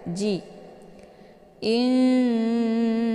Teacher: cara bacanya nunnya disamarkan kemudian siap-siap menuju ke huruf ja ji inji jadi Nun ini seperti bacaan yang digantungkan hukum bacaan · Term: ikhfa